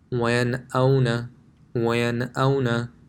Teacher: Here we have a Noon Sakin in the middle of this word, and after it there's a Hamza. So Hamza is one of the letters of the throat, so there will be no Ghunna.